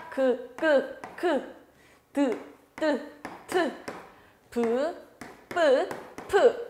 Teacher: 소리내는 방법에 따라서 자음, 파열음, 소리를 막았다가 터뜨리는 자음들